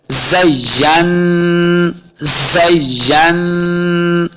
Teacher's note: ज़य्यन, या को नून के साथ मिलाना है, नून के ऊपर शद है, नून मुशद्दद है, तो हमने इस पे गुन्ना करना है।